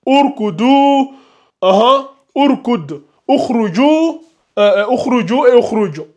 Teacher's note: la hamzatul wasl ici va se lire avec une dhamma